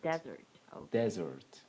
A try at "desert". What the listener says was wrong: Yes, that is right.